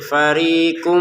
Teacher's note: Farikun di sini ada mim, kita masukin tanwinnya ke mim, sehingga cara bacanya farikum dengan dengungannya jangan lupa.